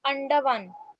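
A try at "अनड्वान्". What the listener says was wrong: ये अंडवान नहीं है, ये अंग है। ये जो आप ड पढ़ रही है, ड नहीं है, ये ग है।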